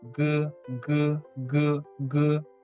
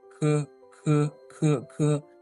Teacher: G doesn't carry as much air as the k.